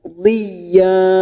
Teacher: fathatain yang dibaca waqaf, mat iwad, 2 harokat kita panjangkan. Qudhiya, tidak boleh lebih dan tidak boleh kurang.